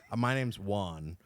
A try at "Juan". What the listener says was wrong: if you don't have the loogie in it, it's wrong.